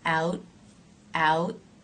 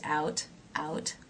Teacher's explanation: in now diphthong ow ow and it then has the tea it's a final T so you might hear it as a stop T out out or you might hear it lightly released